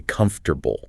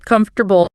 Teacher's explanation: That middle O and the R basically vanish into thin air. The A just becomes this lazy grunt sound.